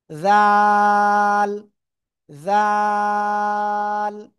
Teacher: জিহ্বার আগায়, উপরে 2 দাঁতের আগায় লাগাবেন। লাগিয়ে মোটা আওয়াজে না, এটা হলো নরম আওয়াজে হবে। ঠিক আছে, জাল, জাল।